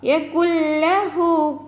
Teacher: ഉന്ന ഉണ്ടാവില്ല. ഉന്ന ഇല്ലാതെ നമ്മൾ കൂട്ടിച്ചേർത്ത് ഓതാട്ടോ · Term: ഇദാം ബിലാ ഉന്ന